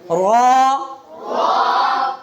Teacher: را کو پر کرنا ہے لیکن ہونٹ گول نہیں کرنا